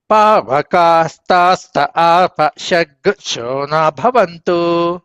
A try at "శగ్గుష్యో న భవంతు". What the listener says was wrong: షగ్గుస్యోన షగ్గుస్యోన్ షగ్గు అని ఆపేస్తున్నారు మీరు. నేను ఉక్కాలు కూడా కలపమంటున్నాను. షగ్గు షగ్గు ఉమ్.